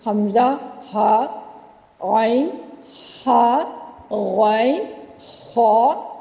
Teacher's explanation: کیونکہ یہ 6 حروف حلق سے ادا ہوتے ہیں، اس لیے ان کو حروف حلقی کہا جاتا ہے